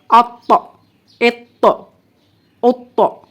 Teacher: اور جب اس پر جزم آئے گی تو ہم قلقلہ کریں گے، یعنی مخرج کو ہلا کر پڑھیں گے، آواز باؤنس ہوگی